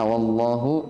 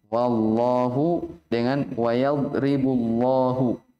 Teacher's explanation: Di atas dikatakan bitaghlil lamil jalalati maka qablaha fathah au dhammah. Dengan menebalkan ya. Lafzul jalalah Allah kalau sebelumnya fathah atau dhammah.